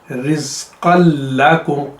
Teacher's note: काफ को लाम के साथ मिला दिया जाता है और नून उसमें से ख़त्म हो जाती है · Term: इदगाम में ताम